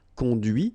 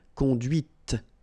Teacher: remember final T is not pronounced